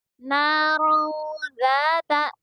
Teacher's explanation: یہاں پر نون کی آواز کو چھپا کر پڑھیں گے، نارن ذات ایسے پڑھیں گے، اور ذال کو نرم پڑھیں گے، اور یہاں پر الف مدہ ہوگا کیونکہ الف سے پہلے ذال کے اوپر زبر ہے، اس لیے یہاں پر الف مدہ ہوگا، اور اسی لیے ذال کو تھوڑا کھینچ کر پڑھیں گے، نارن ذات۔